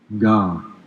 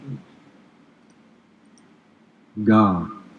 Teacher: so it's a plosive velar sound